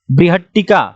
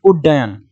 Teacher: त के बाद यदि ट ड हो तो त क्रमशः ट और ड में बदल जाता है